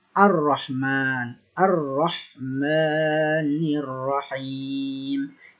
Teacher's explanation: Bukan alif lam. Hamzah tersebut atau hamzatul wasl tersebut dibaca fathah. Karena di awal ayat dan bertemu dengan lam ta'rif.